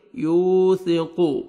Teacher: قاف کو موٹا کر کے پڑھیں گے ، یوثق، وثا، سا پڑھیں گے اور الف مدہ آپ نے